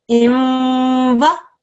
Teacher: There's a tanween just before, so this is idgham naqis. Okay. This is a 2-second assimilation of sounds. This is going to sound as imwa.